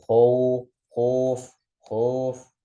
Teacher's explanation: Jadi arah ke bunyi dhammah nggak tebal juga, berarti nggak sampai menimbulkan bunyi tebal yang baru, tapi dia malah seperti menambah atau mengubah yang tadinya fathah menjadi dhammah, mengarah ke dhammah seperti O. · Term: miring vokal